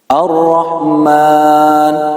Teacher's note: Pada kata Ar-Rahman, yaitu mad yang 2 harokat, maka kita praktekkan dengan 2 ketukan, atau juga bisa dengan 2 hitungan jari.